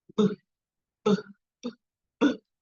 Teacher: o p é surdo ó porque eu não tenho vibração